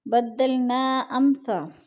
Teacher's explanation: ادھر مد منفصل ہو رہی ہے، 4 الفی مد ہے، 4 الف کے برابر ہم نے اس کو کھینچ کر پڑھنا ہے